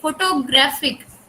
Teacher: with the secondary stress placed on the first syllable and the primary stress on the third। Third syllable पे primary stress का symbol लगा है, ठीक है, grab पे।